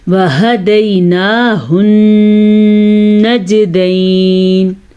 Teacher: میں نے غنہ کیا یہاں پہ کیونکہ نون کے اوپر شد آنے کی وجہ سے ہم غنہ کریں گے